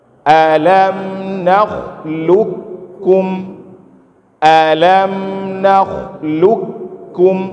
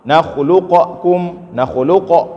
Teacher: Jadi cara baca ini adalah hilang qaf, langsung masuk ke dalam huruf kaf.